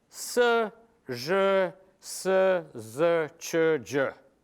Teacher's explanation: all these sounds are made with the flat part of the tongue. They are coronal. They have the coronal feature.